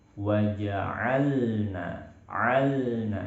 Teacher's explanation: Jangan sertakan suara gunnah pada hidung, pada huruf lam